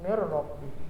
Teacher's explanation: Cara membacanya gimana? Yaitu meleburkan huruf nun ke ro. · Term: idgham bila gunnah